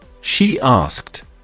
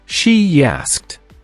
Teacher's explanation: we use a gentle J or Y sound.